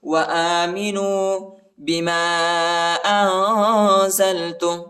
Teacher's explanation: الف کے اوپر جو ہے چھوٹا مد آیا ہے، اس کو تقریباً 2-3 سیکنڈ تک کھینچنا ہے ، اور ادھر اخفا بھی ہے، بما انزلت، بما انزلت مصدقا